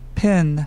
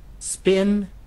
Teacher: Còn cái âm Spin. thì là bạn không cần bật hơi ra nhiều và do đó là cái âm P không bật hơi trong tiếng Anh này nó gần giống với âm P trong tiếng Việt.